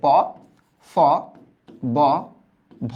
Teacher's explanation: তোমার দুই ঠোট ব্যবহার হচ্ছে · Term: ওষ্ঠ